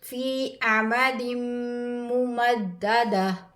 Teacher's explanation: حروف یرملون میں سے میم آیا ہے، ادغام کریں گے. ادغام کا مطلب ہے ملانا